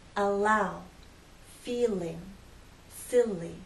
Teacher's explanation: the tip of the tongue drops down to flow into a following vow sound